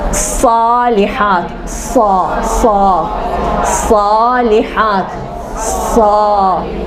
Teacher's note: سا میں یہاں اندر جو ہے نا وہ حلق میں گول کر کر کھوکھلا بنا دیتی ہوں تاکہ آواز موٹی بنے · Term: صاد